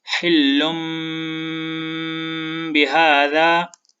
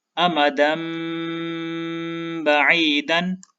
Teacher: अब इस मिसाल में आप देखें, यहाँ पर लाम के ऊपर तनवीन है और इस तनवीन के बाद बा है तो हम इस तनवीन को मीम के साथ मिलाकर गुन्ना करेंगे